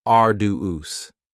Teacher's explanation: arduous has three syllables and the stress is on the first syllable